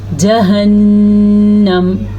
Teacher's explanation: آپ کو خاص آواز آئی ہے رکنے کی، نون کے اوپر جو میں رکی ہوں اسی کو غنہ کہتے ہیں